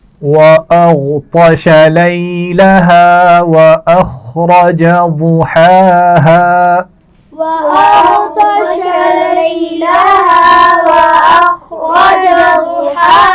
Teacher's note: غین اور طا دونوں موٹے پڑے جائیں گے لیکن اس میں خیال رکھیے کہ غین پر قلقلہ نہ ہونے پائے. وَأَغْطَشَ لیلہا لی یا لین ہے اور ہا الف مدہ ہے.